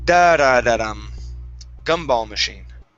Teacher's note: We're going to start with the stress at the beginning and it walks its way down.